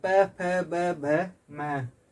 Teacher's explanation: इनका उच्चारण स्थान ओष्ठ होता है